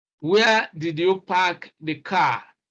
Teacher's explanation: because this is a wh question it ends with a falling tune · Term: falling tone